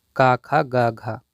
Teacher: घा का उच्चारण स्थान है कंठ